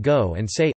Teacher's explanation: Long vowels /iː/ and /uː/ are usually preserved, and in several areas also /oː/ and /eː/, as in go and say